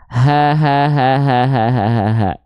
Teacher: Karakternya biasa. Nafasnya karena dia dilafalkan dari pangkal tenggorokan, hak besar itu mengeluarkan nafas yang karakternya biasa.